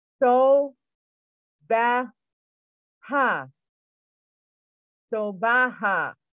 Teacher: Most vowels have a H sound added. So for example, the letter A is pronounced ah.